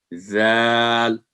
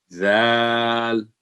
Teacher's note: زبان کی نوک سامنے والے اوپر کے 2 دانتوں کو نرمی سے لگائیں تو یہ حرف ادا ہوتا ہے, زال. یعنی منہ آپ کا سیدھا ہوگا اور زبان کو اوپر دانتوں کو ٹچ کریں گے, زال.